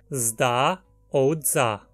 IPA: zda or dza